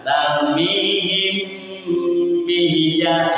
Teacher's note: Mim mati bertemu dengan huruf ba. Hukum bacaannya disebut ikhfa syafawi. Membacanya ditahan selama 3 harakat.